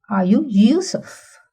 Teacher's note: the segment are you does not receive any stress, and that is called the pre-head.